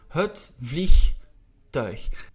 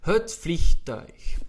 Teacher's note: We have the G, and then we also have a difficult diphthong, which is the U and the I, which we pronounce as ui.